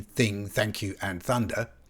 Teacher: We call this the voiceless dental fricative in phonetics